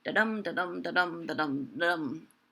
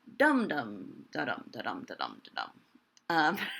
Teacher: Some of them had trochees. So the most common irregularity in a line of iambic pentameter is to have the first syllable, that first iamb, flipped and have it be a trochee instead. So instead of da-dum, da-dum, da-dum, da-dum, da-dum, you would have dum-dum, da-dum, da-dum, da-dum, da-dum.